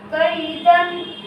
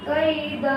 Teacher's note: آگے آیت قیدا، یا ساکن سے پہلے زبر ہے اس لیے یا لین ہوگا، یا لین کو نرم آواز کے ساتھ جلدی پڑھے